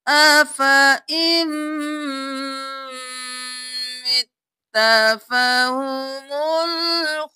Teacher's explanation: کیا افا، افا ام نہیں کرنا، أَفَإِن مِتَّ ان نہیں کرنا، حمزہ کو میم کے ساتھ ملانا ہے، نون کو چھوڑ دینا ہے، میم پر تشدید ہے غنہ بھی کریں